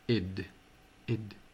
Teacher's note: podríem dir que seria una mica com una E tancada, no una E oberta, sinó una E tancada més una D